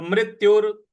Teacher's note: और यु के बाद जो विसर्ग है उसका उच्चारण हमें र ले आना है